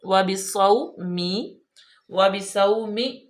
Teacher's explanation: واو ہونٹوں کی گلائی سے، واو پہ زبر ہے، اس کو وبصوم نہیں کرنا، وبصوم، وبصوم، صاد پہ سیٹی کی آواز آئے، با کے نیچے زیر ہے، صومی، صومی، صاد زبر واو، واو لین ہے بالکل نرمی سے، اور صاد پہ سیٹی کی آواز پیدا کریں، وبصومی، وبصومی، اس طرح بھی نہیں کریں گے، اس طرح جھٹکا پیدا ہو جائے گا۔